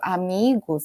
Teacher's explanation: Mi eh a sílaba tônica, então vai ser um pouco mais prolongada